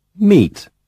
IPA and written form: miːt (meat)